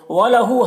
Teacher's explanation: ہاں الٹا پیش ہے، یہ واو مدہ کی طرح ہوتا ہے، اسے ایک الف کے برابر کھینچیں گے